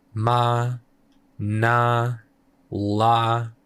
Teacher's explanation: those consonants that like you can kind of hold out on their own. There's no stop there. They kind of have a pitch themselves. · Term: Voice consonant